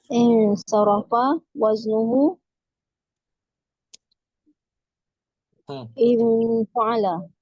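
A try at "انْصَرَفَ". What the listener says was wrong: Betul, in aja, jangan di ikhfa.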